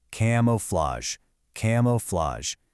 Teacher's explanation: a dactyl, which is one accented followed by two unaccented